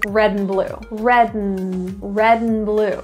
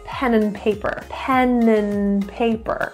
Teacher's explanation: I'm just saying an n Sound that is what a reduction is · Probably 80% of the time, they're actually saying just the N sound.